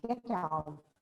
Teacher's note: The same we can pronounce with a rising intonation, get out. It becomes a request.